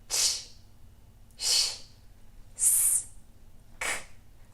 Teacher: Todos esses sons, você não tem nenhuma corda vocal vibrando. É só o ar passando pela sua boca, sendo parcialmente bloqueado ali pela sua boca. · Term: não vozeado